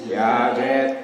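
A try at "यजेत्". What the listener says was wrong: The J and the Y. I thought you did a dyslexic thing and switched them, but you're pronouncing the same. That's why it's kind of confusing me a second.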